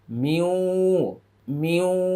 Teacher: এটা নুন সাকিনের পরে ওয়াও আসছে, ইদগামি বাগুন্না